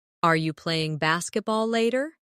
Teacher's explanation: In fast speech, are you can sound like are ya.